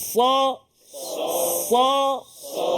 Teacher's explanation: ke gigi bahagian bawah pangkal gigi ni kan Cuba sa tapi dia juga ada sifat istilak dan juga itbak iaitu terangkat lidah kita pangkal lidah pun terangkat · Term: huruf sad